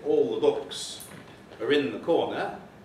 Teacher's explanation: you have dental fricatives replaced by preceding alveolar articulations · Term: assimilation of manner